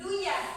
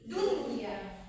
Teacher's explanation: walaupun nun matinya ketemu ya akan tetapi dia menjadi jelas bukan duyah tapi duniah. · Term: izhar mutlak